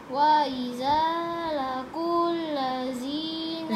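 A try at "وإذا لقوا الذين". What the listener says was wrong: Zalnya tebal. I don't like to hear the tebal zal.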